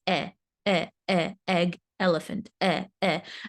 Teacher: sound is e I say this with my students a lot the e sound is a little bit flatter my mouth is opened just a tad and my jaw drops a tiny bit so it's e e e egg elephant e e and it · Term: short e sound, short E sound